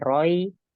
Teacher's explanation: Ro, roi ini adalah tanwin ketemu ya dibaca gunnah roi.